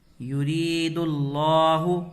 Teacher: را کو کھینچ کر کے پڑھیں گے اور کیا پڑھیں گے؟ باریک پڑھیں گے را کو